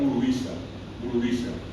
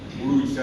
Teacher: Los bolivianos, a diferencia nuestra, acá de los paraguayos, tienen un guaraní donde el acento cae en el medio de la palabra. En el caso nuestro, va al final. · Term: acento llano